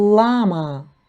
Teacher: перший звук - це звук л приголосний твердий